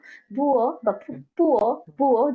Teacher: পি এর দুইটার মতোই শোনা যায় কখনো কখনো বুয়ো বা হুম, পুয়ো বুয়ো যেটাই বলুক না কেন এটা থেকে কিন্তু কোনো বাতাস বের হচ্ছে না